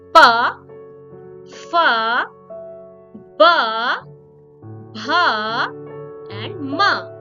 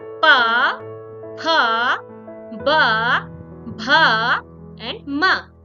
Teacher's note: The power consonants are called labial consonants or the labial sounds because these consonants have sounds that are produced with the help of lips and teeth area of the mouth.